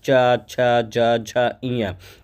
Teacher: जीभ जाकर के तालु में टच करती है, तब ये वर्ग जो है बोला जाता है